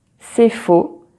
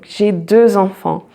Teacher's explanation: So you don't pronounce the X, but when you have a vowel sound coming after it, so like enfant, so you make what we call liaison in French. So you pronounce the X like Z.